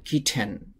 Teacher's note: আমরা অনেক সময় এরকম বলি কিটেন কিটেন এভাবে উচ্চারণ করেন না যারা ব্রিটিশ বা আমেরিকান তারা বলেন কিটেন টি টাকে ঠর মত করে উচ্চারণ করেন তারা